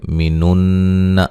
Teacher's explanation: مینن نون مشدد پہ غنہ ضروری ہے